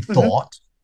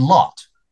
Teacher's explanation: I still have that difference between the /ɔ/ in thought. And the /ɑ/ in lot.